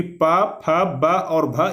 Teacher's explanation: प वर्ग का उच्चारण स्थान ओष्ठ होता है